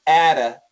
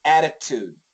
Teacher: This is a flat T, atta, and this is a strong T, attitude.